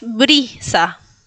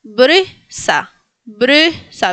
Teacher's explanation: este sonido no lo tenemos en español y es entre una E y una I. Entonces, no es ni E ni es I.